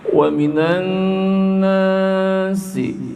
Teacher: ada nun bertasdid dibaca gunnah.